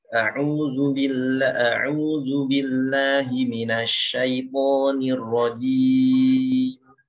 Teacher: Jimnya jangan panjang ya, 2 harokat.